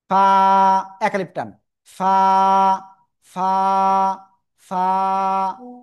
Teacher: নিচের ঠোটের পেট উপরের দাতের আগার সাথে লাগান লাগান লাগান লাগে হালকা বাতাস বের করে উচ্চারণ করতে হবে